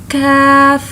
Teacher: We can read it by touching the last part of our tongue to the upper hard palate, not the soft palate